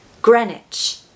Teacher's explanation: So stress that first syllable, gren, Greenwich, Greenwich. Take away that W so that we've just got the ICH left.